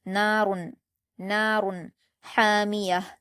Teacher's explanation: را پر تنوین ہے اور پیش کی تنوین ہے تو را کو پر پڑھا جائے گا اور تنوین کے بعد حروف اظہار میں سے ہا آیا ہے تو اس لیے تنوین کو ظاہر کر کے بلا غنہ پڑھا جائے گا. نَارٌ نَارٌ حَامِيَةٌ ہا پر الف مدہ ہے، 2 حرکات کھینچیں گے.